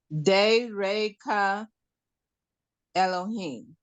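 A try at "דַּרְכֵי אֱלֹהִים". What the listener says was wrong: There's no A. So there's only de. Yeah, there's no A at the end of Derek. There's no Derecha. It's just Derek.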